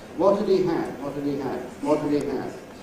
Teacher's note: We don’t like too many /h/’s. It sounds too fussy, and so we drop them on quite a scale. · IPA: /əd/ he /i/ had /hæd/